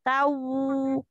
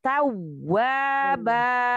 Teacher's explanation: Tasdid itu kan dua huruf yang sama ya. Jadi jangan berubah menjadi lin. Kalau lin, au, tau, tawwaba.